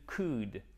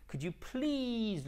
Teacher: On ne prononce pas le L, bien évidemment, ok? On ne dit pas could, mais could.